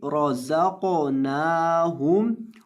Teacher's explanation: रज़क़नाहुम, रॉ, रॉ, रॉ को मोटा करेंगे, रज़क़नाहुम, और नून को लंबा करेंगे, इसके ऊपर खड़ी ज़बर है